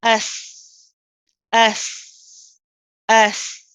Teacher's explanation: So the back of the tongue really doesn't get involved and it stays down. Okay. And it's the front of the tongue. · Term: sin